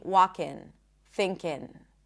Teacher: people choose to not pronounce it as an NG sound, but to pronounce it as an N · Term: N sound